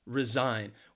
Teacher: resign the stresses on that second syllable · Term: syllable stress